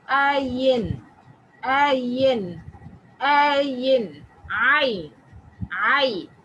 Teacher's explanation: The windpipe is almost closed completely. It has more of rolling sound. It's like when you go to a doctor and he says, open your mouth to say, that is the starting part, and we add yan to it, like ayin, ayin, ayin, ayn, ay.